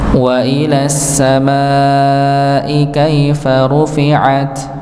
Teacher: Sedangkan wa ila sama lam syamsiyah, maka lamnya langsung masuk kepada shin yang bertasydid, yang tidak terbaca apa? Hamzah dan lamnya.